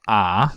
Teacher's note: pallet in the case of the low uh Corner vowel ah the low back vowel we have lowering of the jaw by relaxing the M the temporalis the medial teroid and uh